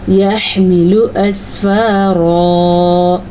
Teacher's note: را کو ہم نے پر پڑھنا ہے کیونکہ را کے اوپر زبر ہے